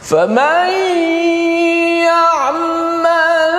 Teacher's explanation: famay ya'mal, nun bertemu dengan ya, yang mana huruf nun tu dimasukkan ke dalam ya.